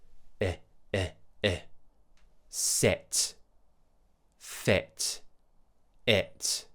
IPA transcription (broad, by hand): ɪ